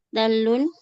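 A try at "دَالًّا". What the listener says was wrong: Dala, dala. Kalau dalun setelah dal ada alif.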